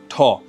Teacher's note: ঠ আমরা যদি উচ্চারণ করি তাহলে দেখতে পাই পশ্চাৎ দন্তমূল, দন্তমূলের পশ্চাতে